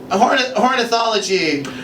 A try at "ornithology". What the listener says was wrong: Now you're calling it hornithology. It makes it sound like someone who wants to have sex with birds.